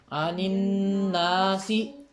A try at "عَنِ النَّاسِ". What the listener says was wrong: ناسی، آدھی آواز ہے، زیر کی آواز ہے، آپ کے پیش ہے کتاب میں، چاہیے غلط لکھی گئی ہے پھر، عن الناسی،